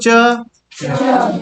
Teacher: अब बोलो च, देखो कहाँ जा रहा है जीव, च, तालु को स्पर्श करा, अभी तालु समझाया था किसको कहते हैं, ये वाला भाग जो रफ सरफेस है। च, जीव जाके तालु को टच कर रहा है। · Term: तालव्य